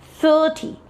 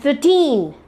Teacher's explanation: the info t the first syllable is prolonged 30 and 13 the second syllable is a long syllable you have to prolong the second syllable while pronouncing 13